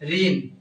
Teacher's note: এখানে মূর্ধন্য থাকলেও উচ্চারণের সময় হবে দন্ত ন